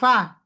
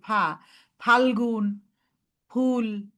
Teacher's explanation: উপরের ঠোঁট নিচের ঠোঁট আলাদা, সামনের দুইটা দাঁত নিচের ঠোঁটের পেটে লাগবে। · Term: আরবি ফা